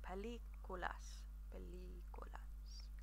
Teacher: It's a slight little line above the I there, or the E. So I'm going to hold that E sound a little bit longer than the other vowels in the word.